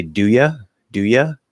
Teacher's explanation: But if it stands out in any way, then ya, reducing you to ya, can sound more informal